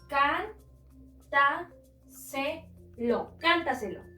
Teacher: Encontramos la sílaba tónica en can. Por lo tanto, es la antes de la antepenúltima sílaba.